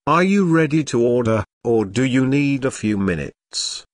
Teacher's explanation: Notice the rising intonation on order and the falling intonation on minutes.